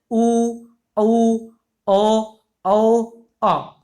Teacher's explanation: इनका जब आप उच्चारण करेंगे तो आपका जो होठ है वो गोलाकार हो जाएंगे, ठीक है। तो उसे क्या बोलेंगे, व्रतमुखी स्वर बोलेंगे।